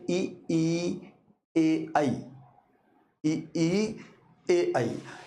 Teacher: इनका उच्चारण जब आप करोगे तो जीभ के अग्र भाग से यानी आगे का जो जीभ का हिस्सा है उससे ये चारों ध्वनियां उच्चारित होती हैं। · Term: अग्र स्वर, अग्र स्वरों